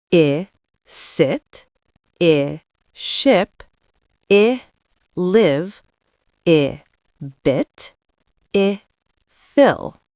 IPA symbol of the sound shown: ɪ